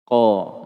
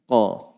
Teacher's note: Lisan naik ke atas, tebal. Ini sifat selalu ada pada huruf qaf. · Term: sifat isti'la